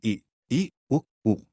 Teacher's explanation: संवृत, जिन स्वरों के उच्चारण में मुखद्वार लगभग बंद रहता है